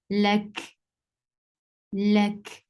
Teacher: You will give sukoon at the last letter, and kaf with sukoon will get sifa of hums, and hums is a flow of breath.